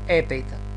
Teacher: поради тоа не читаме здив х пред епејта туку само епејта